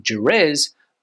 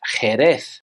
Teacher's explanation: the letter J in Spanish is pronounced like an English H, but a little bit stronger